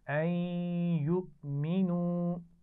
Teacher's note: حمزہ ساکن بھی ہے تو جھٹکے سے بھی پڑھیں گے